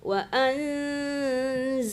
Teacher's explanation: huruf Zai itu berdesir ya ya banyak anginnya